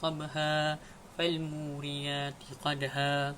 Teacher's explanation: Sebelum saya mewakafkan ayat tersebut, pada ayat pertama dan ayat kedua, pada ayat tabha dan juga qadha terdapat tanda fathatain, dan sebelum kita ingin mewakafkan satu ayat tersebut, kita hanya perlu menyebut mad sepanjang dua harokat saja dan kita tidak perlu menyebut fathatain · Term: mad iwad